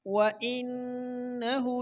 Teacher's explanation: नून मुशद्दद पर हमेशा गुन्ना